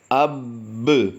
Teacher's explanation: با پر ہم نے جماعوں کے ساتھ قلقلہ کیا ہے، اور پھر اب دوسری مرتبہ اسے پڑھیں گے اس کی زبر کے ساتھ، با زبر با، اب با، یہ 2 مرتبہ با کو ہم نے پڑھ دیا ہے۔